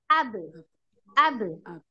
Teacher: harus jelas terdengar qolqolahnya ya